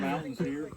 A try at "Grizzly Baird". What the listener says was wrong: Grizzly, not Mountain Baird. Grizzly Baird.